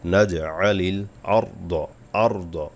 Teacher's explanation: আলাম নাজআলিল আরদ কিফাতা, আলাম কোনো টান হবে না, নাজআলিল, আইন গলা নেবেন, জিম কলকলার অক্ষর, নাজআলিল আরদ, আরদ, র পুর হবে, দদ মোটা হবে